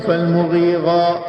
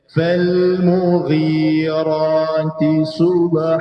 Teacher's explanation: kena ada elemen angkat hujung lidah ya pada langit-langit keras bahagian depan pada huruf arra. Ar ar-ra berbeza dengan gha ghin pada kerongkong tidak ada anjakan lidah.